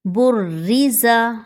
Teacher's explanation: را مشدد ہے تو اس کو 2 بار پڑھا جائے گا۔ ایک بار با کے ساتھ جوائن کریں گے اور دوسری بار زیر کے ساتھ الگ سے پڑھیں گے باریک کر کے۔ اور زا سیٹی کا حروف ہے، اس کو سختی سے پڑھا جائے گا۔